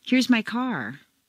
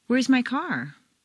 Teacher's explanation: a question Rises a little higher than a statement with the same intonation pattern